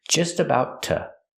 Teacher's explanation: We hear the word to pronounced as tuh.